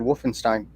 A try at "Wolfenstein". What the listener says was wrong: It sounds like Wolfen. Wolfen. Yeah, that's how you're saying it.